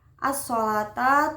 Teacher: As-sholata termasuk bacaan idgham syamsiyah karena memasukkan lam sukun ke huruf shad sehingga bacaan lam sukunnya hilang atau lebur ke huruf shad tersebut